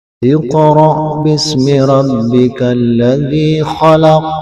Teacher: Iqra itu termasuk dalam qalqalah sughra, karena dia berada di tengah kalimat. Kemudian di akhir kalimat dia waqaf, maka bunyinya agak keras, agak besar, pantulannya agak lebih keras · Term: qalqalah kubra